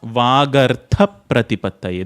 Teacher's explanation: The tha, you just let it explode.